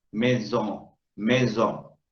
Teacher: La O se ve nasalizada, porque esa N no quiere irse de la palabra.